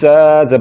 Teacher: ज़ा में सिफ्त सफ़ीर है, इसको पढ़ते हुए सीटी की आवाज़ निकालेंगे